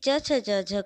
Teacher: ये क वर्ग जो है कंठ से उच्चारण होता है, यानी इन वर्णों का उच्चारण करते समय हवा गले में अटक के रुककर फिर बाहर आती है। उसी तरह से च छ ज झ का जब उच्चारण होता है तो उसका उच्चारण तालु से होता है, यानी दांतों के पीछे वाला जो हिस्सा है उसको हम बोलते हैं तालु।